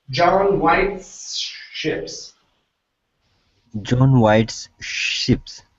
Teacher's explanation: so you're going to slide from the S into the sh